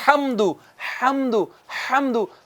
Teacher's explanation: ہا جو ہے حاضرین کرام یہ ادا ہوتا ہے وسط حلق سے. حلق کے درمیان سے.